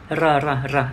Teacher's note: Thì cứ một chữ R thì R nhẹ thôi, còn hai chữ R thì R mạnh và kéo dài lên một chút